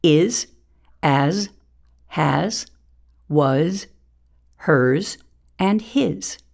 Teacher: The Z sound occurs at the end of a few short but very common words.